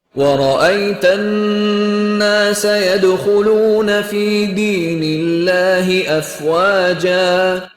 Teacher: Ada lafaz Allah sebelumnya huruf berharokat kasroh, dibaca tipis saja, biasa-biasa saja, enteng saja. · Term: lam tarkik